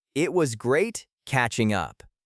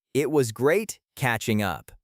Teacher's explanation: make sure the G at the end of catching is very soft or dropped and blend it directly into up.